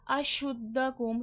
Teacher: شین کی آواز میں تفشی پھیلاؤ ہوتا ہے